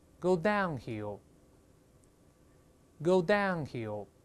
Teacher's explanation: 注意这个▁downhill▁是副词，叫下山地，注意重音在这个▁down▁这个音节上